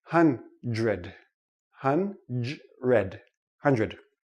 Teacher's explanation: doesn't really sound like dr we don't say hunt read ok it's too difficult for the tongue to make the quick switch so this sounds like JR